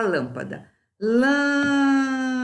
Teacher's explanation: A sílaba tônica não foi a última, não foi a penúltima, foi a antepenúltima. Então, essa palavra é proparoxítona.